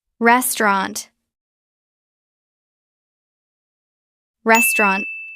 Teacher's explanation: We often drop the middle sound. It becomes two syllables. Res trant. Let's try it.